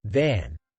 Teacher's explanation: place your hand on your throat and say van and you will feel a vibration for the V sound